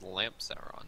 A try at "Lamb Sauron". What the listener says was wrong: There's no P in there. It's L-A, Sauron.